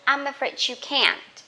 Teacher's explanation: D and Y together you can pronounce J, just like job.